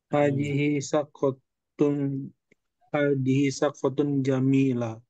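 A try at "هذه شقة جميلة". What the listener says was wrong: Baik, barakallahu fikuma qiraatun jayyidatun.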